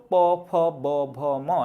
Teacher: পরবর্তীতে ওষ্ঠ, প, ফ, ব, ভ, ম এগুলো দেখবা ঠোঁট থেকে স্পর্শের মাধ্যমে এই বর্ণগুলো উচ্চারিত হয়